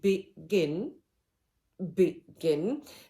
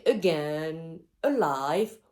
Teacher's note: first one is and thrust the second is stress syllable so the combination of unstressed stressed syllable gives us the rhythm which is called iambic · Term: iambic rhythm